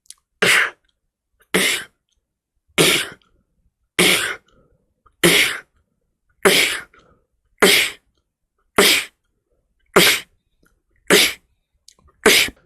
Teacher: 숨을 순간적으로 세게 마실 때마다 뭔가 내 목젖과 그리고 입천장 사이 쪽에 마찰이 느껴지실 겁니다 자 그 마찰을 최대한으로 세게 마시면서 그리고 발음에 따라서이 마찰 느낌을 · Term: 캐스니어